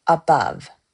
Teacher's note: Iambic, unstressed then stressed.